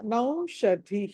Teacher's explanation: సంజీవ నౌషధి, నౌ ష, ఈ ష షణ్ముఖ ష, ఇది ధి అన్నది ధ అన్నది మహాప్రాణం, దాన్ని ఒత్తి పలకాలి. కాబట్టి దీన్ని ఆ తర్వాత విసర్గ ఉంది కాబట్టి నౌషధి అని పలకాలి.